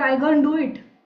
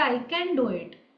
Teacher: every ka becomes ga